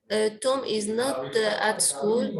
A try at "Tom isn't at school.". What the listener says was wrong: Isn't. It's contracted. Isn't. Yes.